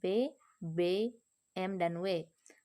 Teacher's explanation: bibir bawah sebagai artikulator menyentuh bibir atas sebagai titik artikulasi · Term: bunyi bilabial